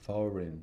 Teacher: It's a 2-syllable word with stress on the first syllable.